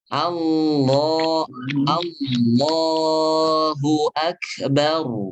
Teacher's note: lam yang ada lafadz Allah adalah ketika baca di awal kalimat maka tebal.